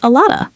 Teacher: notice how the V sound in of almost completely disappears. A lot of simply becomes a lotta.